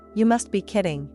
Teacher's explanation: she noticed the rhythm, the emphasis on kidding, and how often it was used in moments of surprise or disbelief.